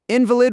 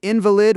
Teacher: invalid with the stress on the second syllable, in val i d, denotes something weak in law, whereas invalid with the stress on the first syllable denotes a person